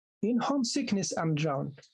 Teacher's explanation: This is also because you don't say sickness, you don't put stress on ness of sickness